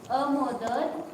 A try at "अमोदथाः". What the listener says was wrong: हाँ मोदथाः अमोदथाः थाः त न म्हणे था म्हणे